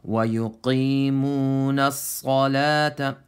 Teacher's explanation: hold on to the sad for a moment because it has tashdeed. So again, وَيُقِيمُونَ الصَّلَاةَ Yeah, sad is full mouth and lam's empty mouth.